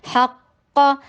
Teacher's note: ہا میں ہمس دیجیے، بریتھ کی ساؤنڈ دیجیے